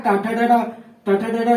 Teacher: जब हम उच्चारण करेंगे तो हमारा जीभ कहाँ सटेगा, मूर्धा में सटेगा, तो उसको बोलेंगे मूर्धन्य वर्ण